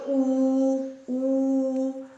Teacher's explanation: ਜੇ ਅਸੀਂ ਬੋਲਾਂਗੇ ਊ ਊ ਤਾਂ ਬੁੱਲ ਸਾਡੇ ਗੋਲ ਹੋ ਗਏ।